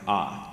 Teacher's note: you got back low open vowel, which would be something like ah.